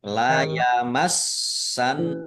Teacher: Kemudian la yamassannalladzina [Musik] sin ada tasdidnya dibaca dobel